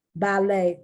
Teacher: ballet that's from french as a result you do not pronounce the t